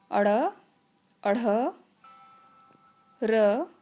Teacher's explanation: इनका उच्चारण स्थान है मूर्धा और जीभ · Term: मूर्धन्य